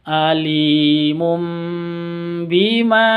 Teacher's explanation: Bima tanwin bertemu dengan ba cara bacanya dengung karena ini bacaan iqlab Oke bacaan iqlab itu dengung sama dengan seperti gunah dengung dua